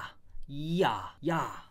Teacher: 야는 사실 이 더하기 아로 발음이 되지 않아요? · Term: 이중모음